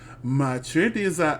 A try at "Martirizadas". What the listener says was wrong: Oh no, that's an R. Martirizadas.